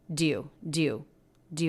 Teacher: it's almost like we're making it just one syllable connecting the d right onto the word you